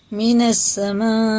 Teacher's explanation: یہ ہے مد متصل، یہ 4 الف کے برابر کھینچ کے پڑھا جائے گا کیونکہ اس کے بعد میں حمزہ الف آتا ہے تو 3 الف کے برابر ہو جاتا، اور حمزہ آتا ہے تو 4 الف کے برابر۔